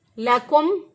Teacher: मीम साकिन के बाद देखें ना मीम है और ना ही बा है, तो इसलिए यहाँ पर हमने इजहार शफवी किया